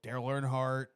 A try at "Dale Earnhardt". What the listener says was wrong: I heard it too. You said Daryl Earnhardt. You said like Daryl. You threw an R in there